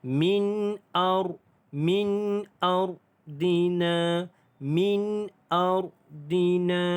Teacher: Di sini kita jumpa nun mati bertemu dengan hamzah. Izhar halki dibaca dengan jelas tanpa dengung. Dan ra ini pula kita tebalkan.